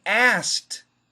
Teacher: me answer your question anyway a-s-k-e-d perfect pronunciation asked asked but if we say it fast we drop the k · But if we say it fast, we drop the K and we say asked.